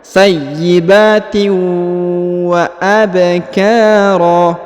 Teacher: huruf tanwin bertemu dengan waw bertasdid maka didengungkan, disamarkan masuk ke huruf waw ya, dileburkan masuk ke huruf waw · huruf ba dipantulkan karena berharokat sukun. Wa abkara, huruf ka dipanjangkan 2 harokat karena terdapat alif di depannya.